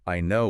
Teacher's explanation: Potentially if you say, "I know." with a flat or downward tone, especially if it's quick, it can sound really dismissive